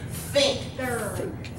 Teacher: you've got air coming between your tongue and your teeth and unvoiced.